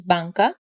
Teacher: an N produced with the back of the tongue instead of at the front